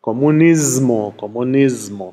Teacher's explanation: Die meisten romanischen Sprachen machen das wie oben, wenn es um den Kommunismus geht. Dann passt sich das S an das folgende M an. Wird also auch stimmhaft, deshalb heißt es eben auf Italienisch Comunismo, Comunismo. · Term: Assimilation